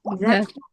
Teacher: इसको पढ़ना है तो ये जबान बाहर निकलेगी